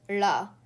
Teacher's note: In Vedic Sanskrit, there was a retroflex lateral approximant, pronounced as la, along with an aspirated version of it, pronounced as lha.